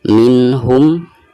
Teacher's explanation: nun sukun lalu berhadapan dengan huruf H, dan huruf H ini adalah merupakan salah satu daripada huruf izhar, maka cara membaca nun sukun tersebut itu harus dijelaskan.